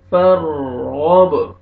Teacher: فر فر غب، غین کو موٹا کر کے پڑھیں گے، اور با قلقلہ ڈبل ساؤنڈ آئے گا